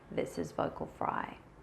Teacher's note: It sounds very low in pitch and a little bit constricted. The vocal folds are actually working very thickly and floppily and not connecting properly and making very strange sound.